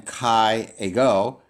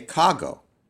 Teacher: the iota dropped out, the epsilon dropped out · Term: elision